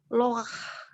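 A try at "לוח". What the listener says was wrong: Lu. This is not O, but this is U. Luah.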